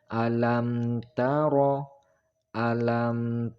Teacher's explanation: izhar syafawi Idhar artinya jelas atau terang maka cara membacanya yaitu mim dibaca dengan jelas tetapi tidak boleh mendengung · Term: idhar syafawi